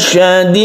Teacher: Ini juga merupakan qalqalah kubro kalau berhenti dan mat alid lis sukun.